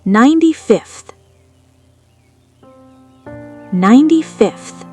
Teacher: The th sound is unvoiced, like a whisper. It's hard to go from a motor to a whisper, so the V changes to a whispery F to match.